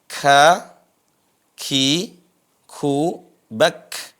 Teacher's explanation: Kemudian huruf kaf ada desisnya.